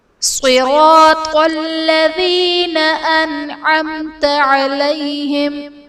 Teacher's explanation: انعمت میں نون ساکن کے بعد حروف حلقی میں سے عین ہے، تو یہاں پر اظہار کا قاعدہ ہوگا، یعنی نون ساکن میں ہم غنہ نہیں کریں گے